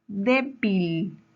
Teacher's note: la antes de la antepenúltima sílaba débil es una palabra grave tiene su mayor fuerza de voz en la penúltima sílaba